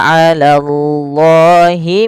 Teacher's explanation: Allah bila dia fathah dengan tebal ya